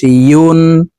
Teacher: ইয়া হরফ জিহ্বার মধ্যখান থেকে উচ্চারণ করব। ইয়া দুই পেশ ইউন।